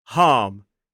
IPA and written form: hɑːm (harm)